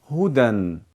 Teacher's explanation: हुदयन नहीं पढ़ेंगे क्योंकि यह या भी नहीं पढ़ा जाता